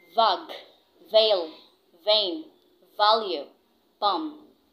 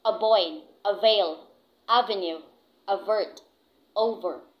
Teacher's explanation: the voice labiodental fricative. For the initial, this is for the letter V.